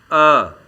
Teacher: इस स्वर के उच्चारण में जीभ का मध्य भाग हिस्सा लेता है इसीलिए इसे मध्य स्वर भी कहा जाता है